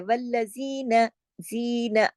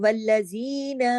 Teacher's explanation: نون کو دیکھیے ایک حرکت ہے، والذین، زین، نون زبر نہ، نون کو نہیں کھینچنا، لمبا نہیں کرنا، نون کو صرف ایک حرکت پڑھا جائے گا ، کیونکہ اگر ہم نون کی آواز کو بڑھا دیں گے